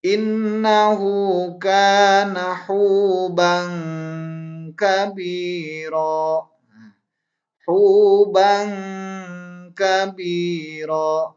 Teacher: Nah, ini ya harus dibaca dengung. Tanwin berhadapan dengan kaf. Karena kaf ini termasuk ke dalam huruf ikhfa. Maka dibacanya harus dengung.